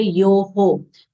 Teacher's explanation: Ma long sound, na full letter, yo long sound, followed by visarga. Visarga sound comes out as ho, as the preceding vowel sound is o.